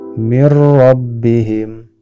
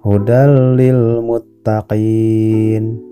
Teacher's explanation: bunyi n pada nun sukun atau tanwin nya harus dimasukkan ke huruf selanjutnya dan tidak disertai dengan dengung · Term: idgham bilagunnah